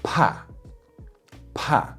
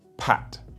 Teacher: the T the p and the K in Chinese are heavily aspirated whereas in English they're less aspirated